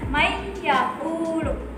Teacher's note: nun sukunnya itu tidak terbaca, dimasukkan ke huruf ya. Jadi dibacanya mayyakulu.